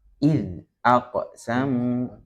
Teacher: Namun yang dalnya zal sukunnya tidak dipantulkan ya. Jadi jangan jangan terbawa karena qofnya itu dipantulkan akhirnya dalilnya ikut dipantulkan. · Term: qalqalah